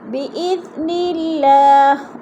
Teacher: اللہ باریک پڑھا جائے گا کیونکہ اللہ سے پہلے لفظ نون کے نیچے زیر ہے تو اللہ کو باریک کر کے پڑھیں گے۔